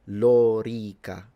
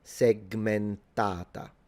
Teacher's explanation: For those of you who are interested in the, I'm not correcting him, it's fine, he's speaking English, but for those of you who are interested in Latin and the precise phonemic vowel length, this vowel, the O and the E, are both long, so it's Lorica, and then segmentata.